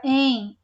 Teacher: o monossílabo átono ele é pronunciado com pouca intensidade